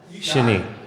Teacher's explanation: short A, long E, accent on the second syllable.